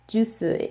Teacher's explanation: it is impossible to have the s sound as a final consonant in Korean that is why they need a vowel after